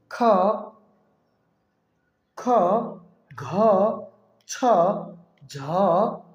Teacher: যে বর্ণগুলো আমাদের উচ্চারণের সময় মুখ দিয়ে অধিক পরিমাণে শ্বাসবায়ু বেশি বাতাস বের হয়, বেশি চাপ দিতে হয় সে বর্ণগুলোকেই মহাপ্রাণ বলে। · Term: মহাপ্রাণ বর্ণ